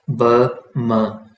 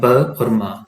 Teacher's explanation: ये अपर और lower lip से प्रोड्यूस होते हैं, इसीलिए इन्हें बाइलेबियल कहा जाता है। बाई का मतलब है टू और लेबियल का मतलब जो है वो लिप्स, ठीक है।